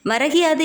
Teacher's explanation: முதல் சொல்லின் இறுதியில் உள்ள கூ என்னும் எழுத்து கி என்று ஒலிக்கிறது அதுவும் முழுமையாக ஒரு மாத்திரை அளவில் ஒலிக்காமல் அரை மாத்திரை அளவாக குறைந்து ஒலிக்கிறது